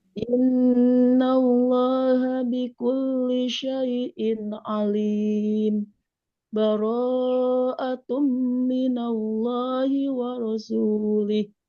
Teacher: Baronya tambah lagi. Baro, ambil 4 harokat.